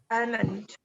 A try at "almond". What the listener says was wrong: The incorrect pronunciation which most of us repeat कर रहे हैं अभी तक, that is almond, क्योंकि हमें L दिख रहा है, almond बोल रहे हैं, but these are not those words.